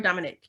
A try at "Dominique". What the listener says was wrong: Dominique. So there's no Nick. So it's DOMINIQUE. Well, I feel like Dominic as the NIC or NICK.